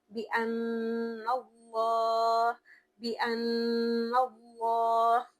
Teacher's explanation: یہاں پر نون شد والا ہے تو ہم غنا کریں گے، یعنی گنگنایا جائے گا، اور اللہ کو پر پڑھیں گے کیونکہ اس سے پہلے والا جو حرف ہے یعنی کہ نون اس پر زبر ہے، اور آخر میں را کو پر پڑھیں گے کیونکہ اس کے اوپر بھی کھڑی زبر ہے، یعنی وہ زبر کے ہی برابر ہے، تو زبر کی وجہ سے را کو ہم پر پڑھیں گے۔